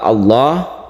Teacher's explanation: membaca tebal pada lam yang terdapat di dalam lafzul jalalah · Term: tafkhim